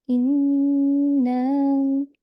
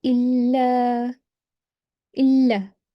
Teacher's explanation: So the difference is because we apply the rule of gunna on meme and noon mushaddad, because meme and noon are nasal sounds, and they emit a resonating sound from the nose. So for the beautification when reciting, you have to hold that nasal sound for 2 seconds. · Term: ghunna